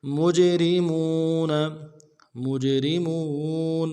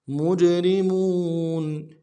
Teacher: را کو باریک ادا کریں گے، میم کو واو کے ساتھ ملانا ہے، واو مدہ ایک الف